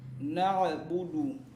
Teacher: huruf dalnya itu jangan sampai ada nafas yang mengalir